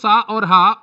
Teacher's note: इनका उच्चारण रगड़ या घर्षण से उत्पन्न ऊष्म वायु से होता है। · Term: ऊष्म व्यंजन